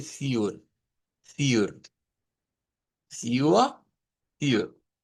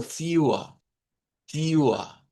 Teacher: Puede ser con roticidad o puede ser sin roticidad. Entonces, esta la podemos decir sin roticidad, que sería un Deutsche estándar, la diríamos como fewer, fewer.